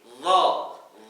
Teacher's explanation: Dho ini bunyi o-nya karena pangkal lidahnya yang terangkat. Ditambah nanti ada sifat itbaq bagian tengah lidah, yang tingginya juga menempel ke atas.